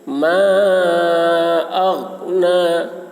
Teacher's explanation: ماں کو کھینچیں گے. اغنا غین کو حلق سے ادا کریں گے، لیکن یہاں پر اس بات کا خیال رکھنا ہے کہ یہاں پر قلقلہ غین میں نہ ہونے پائے. اگر اس طریقے سے بولتے ہیں یہ غلط ہو جائے گا کیونکہ قلقلہ ہو جا رہا ہے.